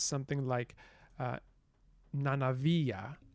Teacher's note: it has intervocalic voicing of obstruents